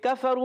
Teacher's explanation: زبان کی جڑ تالو کے سخت حصے سے کاف ادا ہوگا